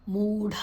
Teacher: ಢ ಮಹಾಪ್ರಾಣ, ಮೂ ಮತ್ತು ಢ ಎರಡು ಕೂಡ ದೀರ್ಘಾಕ್ಷರಗಳು